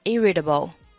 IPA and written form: ˈɪrɪtəbl (irritable)